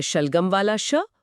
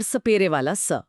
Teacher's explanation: ये उच्चारण स्थान का विज्ञान है। श एक तालव्य ध्वनि है जहां जीभ मुड़कर मुंह की छत को छूती है, जबकि स एक दंतीय ध्वनि है जहां जीभ दांतों के ठीक पीछे आती है।